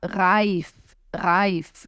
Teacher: Ambos estão corretos. Pode vibrar na ponta da língua ou lá no final da boca. Mas tem que vibrar.